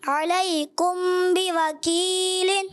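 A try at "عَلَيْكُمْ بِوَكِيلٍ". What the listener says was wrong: غنہ پورا کریں، غنہ اور لمبا کریں، اور لمبا کریں. علیکم بوکیل. اب بھی یاد آئے گی، اور اس کو بہتر کریں. اخفاء شفوی.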